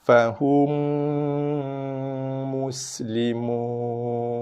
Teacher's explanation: Okey, kita ada mim jumpa mim, diidghamkan, idgham syafawi, tutup mulut, kejapkan, kacip bibir dengan dengung, kemudian jaga sin sofin mus. Bunyikan desiran, jelaskan bunyi desiran pada sin mati.